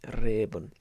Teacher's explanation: nice rolled R on Reben, and E, like a kind of Yorkshire accent, Reben.